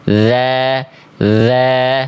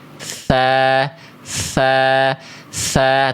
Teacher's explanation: Ketika teman-teman melafazkan dzal, jangan sampai keluar angin. Dza yang mengalir hanya suara saja.